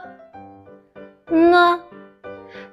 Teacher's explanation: The pronunciation parts are the same, but this time the airflow needs to vibrate your vocal cords. Pronounce from the nasal cavity.